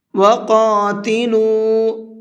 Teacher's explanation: قاف کو منہ بھر کے پڑھیں گے اور لام کو تھوڑا سا کھینچ کر کے پڑھیں گے۔